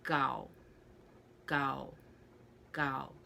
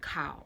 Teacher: the k a u s then you get gau gao gao so the k isn't as aspirated and it's almost like it sounds like a g